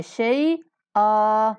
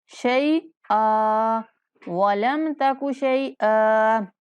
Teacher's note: من قبل ولم تک شیئا، شیئا نہیں پڑھنا، شیئی پڑھنا ہے، شیئا، اور حمزہ کو ایک الف کے برابر لمبا کر کے وقف کریں گے